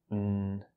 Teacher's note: an n, consonant sound using the tip of the tongue and vibration